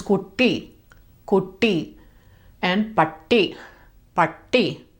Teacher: when it's double, it holds on to that T sound